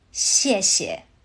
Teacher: The second 谢 softens into a neutral tone, so it comes out light and quick.